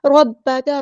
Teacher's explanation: را ہمارا heavy letter ہے، با مشدد ہے تو اس کو اچھے سے ادا کرنا ہے، کاف باریک پڑھیں گے اور کاف کی زبر کو لمبا نہیں کریں گے.